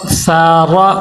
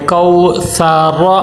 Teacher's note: ثا کا مخرج صحیح ہو، سین کی آواز نہ آئے